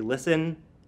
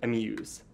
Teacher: a strong weak verb would be listen, and a weak, strong verb would be amuse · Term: stress patterns